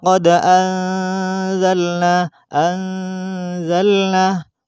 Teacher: memasukkan suara n mati pada Za karena Za tidak termasuk huruf yang en maka harus dimasukkan dan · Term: dengung